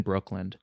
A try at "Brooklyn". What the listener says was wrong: Did you say Brooklyn? You say a D in the end? I heard a D. Brooklyn. Brooklyn.